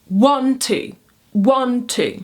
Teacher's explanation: Next up, trochaic. Trochaic rhythm is a duple falling rhythm. It starts on a stressed syllable and ends on an unstressed syllable.